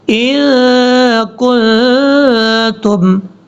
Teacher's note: ان پہ بھی غنہ کریں گے، کن پہ بھی غنہ کریں گے. یہاں دونوں پہ نون ساکن کا اخفا ہو رہا ہے